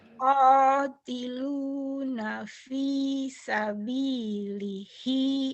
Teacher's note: Hinya panjang. Hinya panjang lagi.